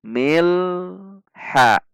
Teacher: Perhatikan alif lam qamariyah juga tidak memantul. Mil tahan di titik lam sampai mengucapkan huruf ha. Mil ha. Jika dilepas maka mengucapkannya menjadi milha.